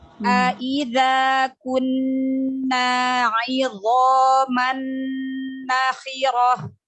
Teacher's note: Dha ditebalkan lagi, huruf dha-nya huruf isti'la ya, huruf dha pangkal lidahnya diangkat.